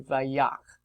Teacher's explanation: Yakeh, this is from naka, the verb naka. And that segol he at the end is going to be clipped or dropped off in a reversing vav imperfect to vayak. And that's from naka, third he verb. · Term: clipped form